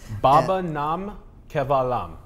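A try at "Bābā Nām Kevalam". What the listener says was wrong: Yeah, it's a long E, Kevalam.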